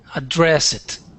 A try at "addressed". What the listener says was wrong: not address it but go straight to that t